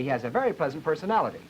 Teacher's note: come all the way down to pitch one